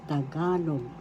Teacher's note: First syllable ta, second syllable ga, third syllable log. The accent is in the second syllable